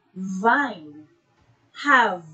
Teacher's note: To articulate this sound, the air is forced through the upper teeth and lower lip. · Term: labiodental